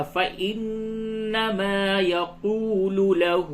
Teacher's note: لام پیش لو کو جلدی سے پڑھیں گے، اور لہو میں جو ہا الٹا پیش ہے اس کو تھوڑا کھینچ کر کے پڑھیں گے